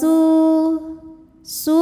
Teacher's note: Sebab ada wau sukun didahului dommah. Maka sin dipanjangkan dua harakat. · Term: mad thobi'i zohiri